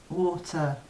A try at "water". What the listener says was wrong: War. But there's no R. War. You don't say the R in war. Say war again. War. Ter. Water.